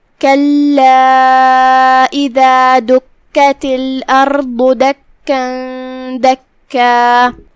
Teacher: کلمت کلا میں یہاں لام پہ تشدید ہے. ہم 2 حرف کے برابر لام کو پڑھیں گے جو کہ تشدید کی اصلیت 2 حرف ہوتی ہے.